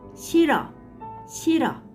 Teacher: When 받침 real 히읗 is followed by 모음, 받침 makes no sound and 모음 is combined with 르 sound.